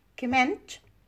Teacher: Now, comment, this is a noun, and stress is on the first syllable. Comment is a verb, and stress is on the second syllable.